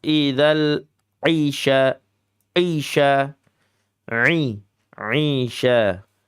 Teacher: Huruf ain itu ain ya, ain maksudnya. Ain itu sifatnya tawasud, pertengahan antara syiddah dan rakhawah.